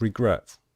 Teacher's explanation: With regret, we stress the last syllable, the final syllable.